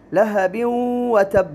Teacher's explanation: سورۃ اللہب کے اندر اگر ہم دیکھیں تو تبت یدا ابی لہب وتب، لہب وتب، یہاں پر ادغام کا حکم ہے، تنوین ہے اور تنوین کے بعد واو، حرف واو آیا ہے جو کہ ادغام بالغنہ کا حرف ہے تو یہاں ادغام بالغنہ ہوگا